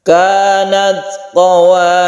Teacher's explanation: Qawariro yang ada di ayat 15 apabila diwakafkan itu belakangnya ini dipanjangkan satu alif.